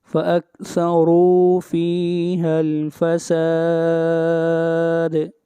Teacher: اگلی آیت، فاکثروا، را کو موٹا پڑھیں گے اور را کے اوپر پیش ہے، فیہا الفساد، دال کے اوپر قلقلہ، آواز کو ہلائیں گے